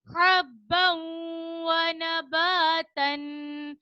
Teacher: حَبًّا وَنَبَاتًا, با کے اوپر دو زبر کی تنوین ہے, دو زبر کی تنوین کے بعد یا, میم, نون, واو میں سے واو آ رہا ہے تو यहाँ पे हम एक अलिफ की मिकदार गुन्ना करेंगे